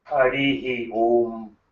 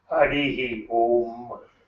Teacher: Whatever the preceding vowel, with that it is repeated, and repeated with voiced Ha.